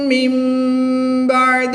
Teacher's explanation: نون ساکن کے بعد حرف با آ جائے تو اقلاب ہوگا، نون ساکن کو میم سے بدل کر غنہ زمانی کر کے پڑھیں گے